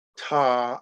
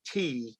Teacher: And I'm talking about more not the front of the tongue, but closer to the middle of the tongue. Like if we say ta and then we say ti, you can feel the middle of the tongue rising